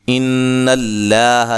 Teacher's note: لفظ اللہ کا لام ہے اس کو ہم موٹا پڑھیں گے